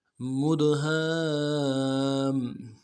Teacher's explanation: میم کو دال کے ساتھ ملانا ہے، دال جب ساکن ہو تو قلقلہ کریں گے ، قلقلہ ہوگا، مد، ہا کے ساتھ الف مدہ ہے، الف